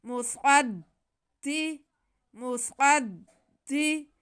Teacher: میم پہ پیش، صاد پہ زبر اور دال مشدد. صاد کو ہم موٹا کر کے پڑھیں گے، حروف مستعلیہ ہے، اور صاد کا زبر ہم دال کے ساتھ ملائیں گے کیونکہ دال مشدد ہے.